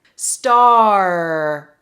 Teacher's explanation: The sides of the tongue go against the top teeth, okay? And the tip of the tongue curls up to the roof of your mouth, but it does not touch the roof of your mouth. Star, So you should see that my tongue is really going up. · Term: R sound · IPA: /ɑɹ/